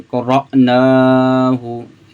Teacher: यहाँ पे हमज़ा साकिना है, इसको हम झटका दे के पढ़ेंगे